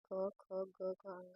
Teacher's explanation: इसका उच्चारण स्थान जो है कंठ और जीभ का निचला हिस्सा होता है। जिन ध्वनि का उच्चारण करने पर जीभ का निचला हिस्सा हमारे कंठ तक होता है उसे कंठ व्यंजन कहते हैं।